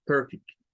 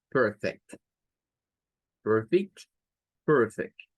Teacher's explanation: la segunda pronunciación es con un schwa, con un schwa. Y esta sonará a E.